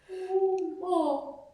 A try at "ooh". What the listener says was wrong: Look at the mirror. See how you're puckering? You don't need it.